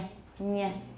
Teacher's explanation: a palatalized N, 恶化的 N. That means there's a y sound together with the N, nye, nye. Everyone, nye.